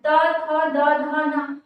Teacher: जब हमने त बोला तो हम ध्यान देंगे कि जो जीभ है वो दांत को टच कर रही है, त, थ में भी दांत को टच कर रही है। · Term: दंत वर्ड